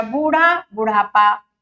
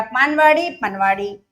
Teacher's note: तो जो दीर्घ स्वर हैं, चाहे वो आ हो, चाहे ई हो, चाहे ऊ हो, दीर्घ स्वर ह्रस्व हो जाते हैं ये कुछ प्रत्यय जब लगते हैं।